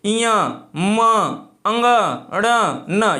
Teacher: ये कैसे बोले जा रहे हैं, नाक से बोले जाते हैं, अर्थात ये क्या हो जाएगा, इसका उच्चारण स्थान नासिक हो जाएगा, नाक से हो जाएगा।